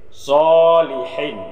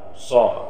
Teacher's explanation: so ini hukumnya intibat. So, jadi tebal ya.